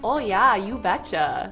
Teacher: if you're from North Dakota, you've got some long O's